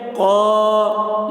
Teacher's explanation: ان اللہ، قال اللہ، قاف الف زبر قا، الف سے پہلے زبر ہے، الف مدہ ہوا، اس لیے الف مدہ کو ایک الف کے برابر کھینچ کر پڑھیں گے